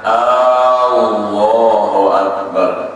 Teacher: Kelima, tiada dipanjangkan hamzah jalalah. Lafaz jalalah yaitu Allah, permulaannya huruf hamzah, jangan dibaca panjang.